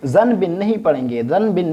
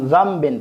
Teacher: اس نون ساکن کو ہم میم کے ساتھ بدل دیں گے اور اس کو اقلاب کہا جاتا ہے، یعنی ایک چیز کو دوسرے کے ساتھ بدل کر دینا، مقلب کر دینا، الٹا کر دینا۔